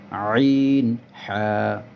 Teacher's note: হলকের মধ্যখান হইতে আইন হা